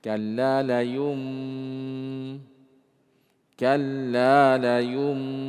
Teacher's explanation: Yang ketiga ikhfa, samar-samar. Mim yang ditahan ini ternyata tidak jelas, tapi samar-samar. · Ya, maka dirubah nunnya. Yang asalnya nun di situ layun badanna, kita rubah menjadi miman. Ya, kita baca mim. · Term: al-iqlab